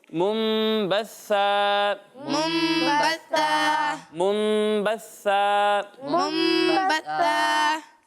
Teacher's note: سا میں سیٹی کی آواز نہیں آئے گی